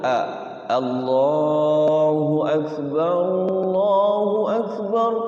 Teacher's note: Allah pakai a dulu jangan pakai o